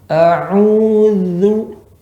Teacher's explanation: Ujung lidah bertemu dengan ujung gigi seri atas.